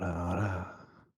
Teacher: I like how breathy it is at the end.